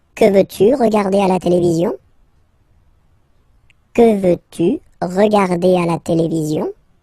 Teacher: you can hear that I've been raising a little bit my voice at the end